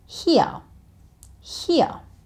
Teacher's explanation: when the British and the Australians say it, you can't really hear the letter R. So it sounds like here, here.